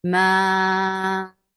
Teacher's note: mad munfasil jais, make it 4 counts long.